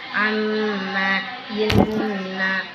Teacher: Guna apabila Idgham guna apabila ada mim tasydid atau nun tasydid, maka hukum bacaannya disebut guna, maka cara membacanya dipanjangkan 2 harokat.